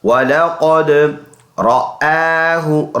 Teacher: وَلَقَدْ واو زبر وا، لام زبر لا، ولا قاف دال زبر قد، وَلَقَدْ قاف پر پڑھیں گے، موٹا ادا کریں گے منہ بھر کر